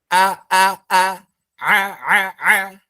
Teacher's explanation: hamzah kan di tenggorokan paling bawah